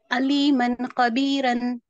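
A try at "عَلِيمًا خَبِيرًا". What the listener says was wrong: अलीमन खबीरन, ऐसा। रन बोले तो बारीक हो गया होने, रॉ को मोटा पढ़ना है। रॉ के कवायद पढ़े ना अपन, रॉ को मोटा पढ़ना है बोले ना?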